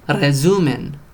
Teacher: It's strong when it's the first letter of a word, and it makes sort of this rolled R sound, almost as if there's a double R.